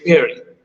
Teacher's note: most of the eastern states in india they do not have the sound we call ver sound